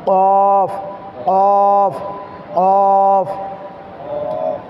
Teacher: এই কফ এটি হচ্ছে জিহ্বার গোড়া তার বরাবর উপরে তালুর সঙ্গে লাগিয়ে উচ্চারণ করতে হয়। অর্থাৎ এই জিহ্বার শুরুতে আমাদের ভিতরের শুরু যেখান থেকে সেখান থেকে নিয়ে জিহ্বার গোড়া তার বরাবর উপরে তালুর সঙ্গে ওই বরাবর তালু যে আছে ওই তালুর সঙ্গে লাগিয়ে আমাদেরকে কফ উচ্চারণ করতে হবে।